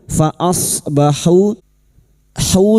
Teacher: duma diikuti wau sukun dua harakat mad th'i